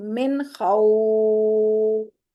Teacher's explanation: تو جب وقف کریں گے من خوف، اس طرح مد عارض لین پڑھیں گے